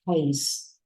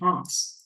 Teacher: Đây là e dọc miệng xuống, e dọc miệng chứ không phải là âm a.